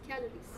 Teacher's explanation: The first syllable is stress.